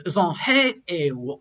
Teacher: So like when I said the word zhonghe, the zong is pronounced with a z, and we know that the shang is in that low tone category. So it's starting with a low tone, and then the rest of the word kind of goes up to an apex and then falls down to all of the other characters in that word.